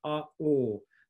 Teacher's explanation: There's still length involved, but also a quality difference.